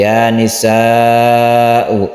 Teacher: pendeknya seperti ini ya Nisa uh ini adalah mad wajib muttasil wajib artinya harus harus panjang dua setengah Alif